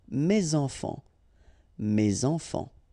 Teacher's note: Enfant, children is starting with a vowel, so you should make the liaison